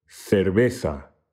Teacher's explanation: the upper and the lower lips come together extremely lightly